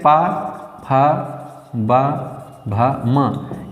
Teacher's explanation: ओठ से दोनों ओठों से उच्चारित होने वाले वर्ण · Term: ओष